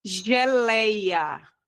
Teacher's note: eu consigo verificar que a sílaba mais forte é o lei